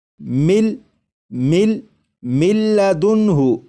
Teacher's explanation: جب ادغام کریں گے تو غنہ بھی نہیں کریں گے